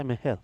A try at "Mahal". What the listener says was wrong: It's Mahal. Mahal, not Mihal. Trust me, it's Mahal, not Mihal.